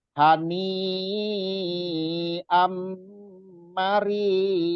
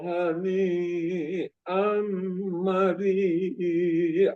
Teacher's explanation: Matobi'i bertemu hamzah dalam satu kata semua. Jadi mad wajib mutasil. Jadi lebih prioritas ini panjang 4 sampai 5 harokat.